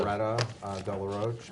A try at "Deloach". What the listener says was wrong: Deloach. You said DeRoche and it's Deloach. you, with the L. L.